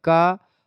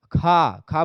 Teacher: महाप्राण अल्पप्राण ध्वनियां हो गई बहुत सारी ठीक है जैसे का का में कम वायु निकल रही तो एक प्रकार से क आपका जो हो गया ये अल्प प्राण है